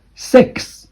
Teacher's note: Number 6 with a very weak K sound.